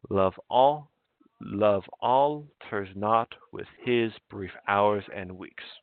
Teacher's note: So an iamb, unstressed, stressed, and 5 lines.